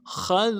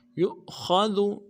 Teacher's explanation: خا کو موٹا ادا کریں گے، ذال کو باریک ادا کریں گے